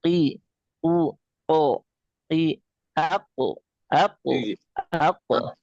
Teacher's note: Qof ini adalah keluar dari aqsal lisan. Lisan yang paling ee dalam ya.